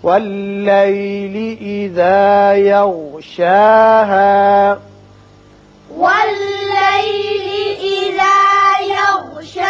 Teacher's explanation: دیکھیے یہاں شا کے اور شین کے اوپر کھڑا زبر ہے، ہا کے اوپر زبر اور الف ہے، دونوں کی آواز مساوی طور پر اوپر کھینچیں گے